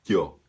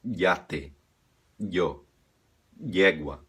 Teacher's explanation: Pressionando a língua no céu da boca, fazendo a I com pressão no céu da boca, yo, e solta o yo.